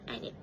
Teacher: the d sound in the word and was elided become and it instead of and it.